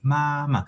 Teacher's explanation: The first ma is the first tone, of course. And then the second syllable of ma has no tone above the vowel. It's just like this, the light and soft tone.